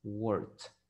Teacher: Work termina con una K, un sonido de K. Entonces la ed se va a pronunciar como una T.